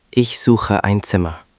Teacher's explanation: Notice suche has the hard ch because it follows u.